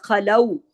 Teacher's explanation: خا ہیوی پڑھیں گے اور آگے واو لین ہے، خلو، لام باریک پڑھیں گے اور واو لین ہے.